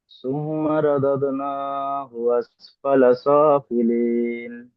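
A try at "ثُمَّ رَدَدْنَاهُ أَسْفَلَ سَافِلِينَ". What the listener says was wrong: তোমরা একটু বেশি গুণা করবেন, এখানে ওয়াজিব গুণা।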